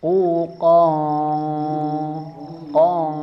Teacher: Karena ada tanwin bertemu dengan huruf qof sehingga dibaca ikhfa. Dan ikhfanya huruf qf ini termasuk ikhfa ab'ad yang jauh agak dalam mengangkat pangkal lidah